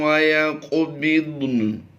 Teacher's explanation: قاف بھی پر کرنی ہے، ضاد بھی پر کرنی ہے، اور کاف پر ہم نے قلقلہ بھی کرنا ہے، کیونکہ کاف حروف قلقلہ سے بھی ہے اور ساکن بھی ہے۔